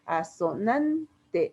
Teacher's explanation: la sílaba tónica está en la segunda a